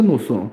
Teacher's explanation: 히읗과 시옷이 만나면은 이것은 그 하나가 없어지고 쌍시옷이 됩니다. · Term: 된소리